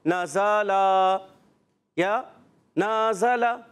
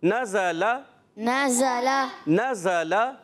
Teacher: تینوں حرکات کو ایک جیسا کھینچنا ہے، زیادہ نہیں کھینچنا، کسی کو زیادہ کر دیا، نزل یا نازل۔